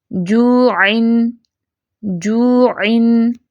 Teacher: جیم کی ادائیگی کے وقت وسط اللسان یعنی زبان کا درمیانہ حصہ اوپر کے تالو سے ٹکرا کر الگ ہو جاتا ہے